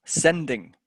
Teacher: so the first syllable of the word sending i'm going to stress on it